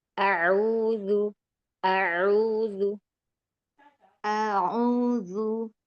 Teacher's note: Di bagian tengah tenggorokan, yaitu epiglotis, dorong lebih jauh ke belakang.